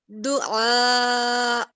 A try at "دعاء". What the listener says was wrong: ٹھیک ہے, مگر مد آپ کا بھی چھوٹا ہے, مگر خیر پریکٹس رکھیں.